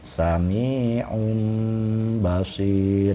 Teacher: tidak dibaca un, nah, tidak dibaca seperti idhar, melainkan bersuara mim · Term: iklab